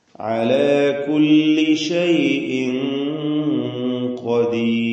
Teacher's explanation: അന്ത്യത്തിൽ വന്ന റാഇനെ തർക്കീഖ് ചെയ്യണം, നേർപ്പിച്ച് ഖദീർ എന്ന് ഉച്ചരിക്കണം.